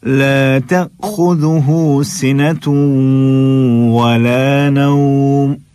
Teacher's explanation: یہ جو حمزہ ساکن جب ہم ادا کریں گے نا تو ہماری آواز بند ہو جائے گی